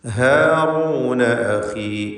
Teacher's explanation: ഇസ്തിഫാലിൻ്റെ ഹർഫാണ് ഹ. അതിൻ്റെ ദീർഘാക്ഷരമായ അലിഫിലും തർക്കീഖാണ്.